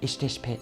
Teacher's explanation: the voice consonant be in the interrogative particle and in the negative suffix become the voiceless pe if it adds to a voiceless consonant